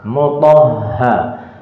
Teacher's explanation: Ha itu muncul dari tenggorokan yang paling jauh ya. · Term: huruf ha